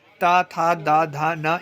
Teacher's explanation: ता वर्ग में ता, था, दा, धा, ना ये दंत में आ जाते हैं